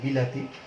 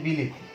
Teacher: তো আমরা এখানে দেখছি যে রস্বই, এখানে সরেয়া এবং তারপরে রস্বই, আর পরিবর্তনের মধ্যে গিয়ে আমরা তিনটাই রস্বই পাচ্ছি। ফলে আমরা বুঝতে পারছি যে আমাদের মাঝখানে যেই স্বরবর্ণটি ছিল সেটি স্বরবর্ণটি পরিবর্তিত হয়ে অন্য রূপ লাভ করেছে এই দুইটির প্রভাবে। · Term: মধ্যাগত